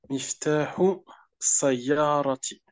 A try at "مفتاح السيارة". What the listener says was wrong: Donc là, tu dois faire la liaison entre les deux mots parce qu'il y a un alif lam et ça implique qu'il y a une shadda ici. Donc, miftahu. Des fois, j'essaie d'aller trop vite, puis je saute des lettres. Miftahu sayyara.